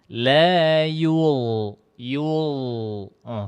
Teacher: ujung lidah nempel di ujung gigi seri atas. Ya, la yul. Sambil dinaikkan pangkal lidahnya. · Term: huruf dha